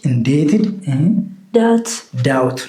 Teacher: B is silent before T.